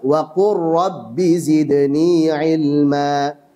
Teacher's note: Jadi lam sukun ketemu ra dibaca dengan idgham. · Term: idgham kamil